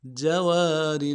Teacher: وَلَهُ الْجَوَارِ جیم کو نرم سے ادا کریں گے، واو کے ساتھ الف مدہ ہے، ایک الف دال میں کھینچیں گے، واو کو لام کے ساتھ ملائیں گے۔ · میم کو نون ساکن کے ساتھ ملانا ہے، نون ساکن میں غنہ کریں گے، شین کو نرم سے ادا کریں گے، شین کے ساتھ حمزہ ہے، حمزہ کے اوپر کھڑا زبر ہے، ایک الف دال میں کھینچیں گے، تا کو نرم سے ادا کریں گے۔